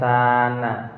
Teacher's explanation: Kemudian sana, yaitu bacaan matobi'i karena sa berharokat fathah bertemu dengan alif, yaitu panjang bacaannya satu alif atau dua harokat